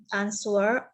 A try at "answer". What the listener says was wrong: Hati-hati, ucapan answer itu w-nya nggak diucapkan ya. Jadi answer. W-nya nggak kedengaran ya. W-nya itu melesat hilang. Jadi w-nya nggak boleh kedengaran.